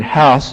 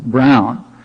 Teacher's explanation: the vowel of the word house is shorter than the vowel of the word Brown